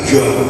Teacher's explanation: padahal huruf jim itu tidak ada ditekuk, ya tidak ada ditekuk, maka bunyinya tidak jah, tapi ja